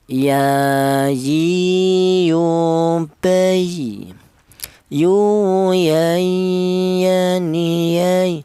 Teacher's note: Huruf ya ini keluarnya huruf berasal dari tengah lidah